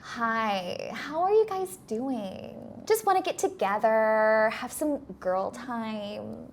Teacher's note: The vocal fry is really strong.